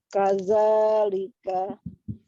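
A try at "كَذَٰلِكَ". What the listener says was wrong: Kadzalika, zalnya ya masih. Tidak kaza, kaza,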